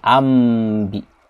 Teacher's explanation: Makanya di sini ada tanda huruf mim. Ya, tanda huruf mim artinya berarti nunnya diganti dengan huruf mim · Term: iqlab